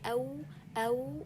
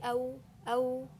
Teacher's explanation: For example, when I say أو, when you say أو, you will notice that your lips, you circled to the two lips and pushed them to the front, and you let a small opening between them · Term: non-extendable واو